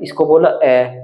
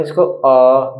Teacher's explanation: अ एक मात्रा का समय लगा लेकिन यहां पर अ बोलेंगे इसको अ दो मात्रा का समय लगा